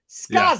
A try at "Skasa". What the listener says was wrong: Drop the Z and make it another S. Skasa.